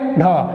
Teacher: ढ का मतलब हुआ जीभ आपके तालु वाले भाग को हल्का सा टच करके तुरंत वापस आ गई, एक झटके में ये होता है। इसको क्या कहते हैं आप, उच्छिप्त व्यंजन कहते हैं, ठीक है।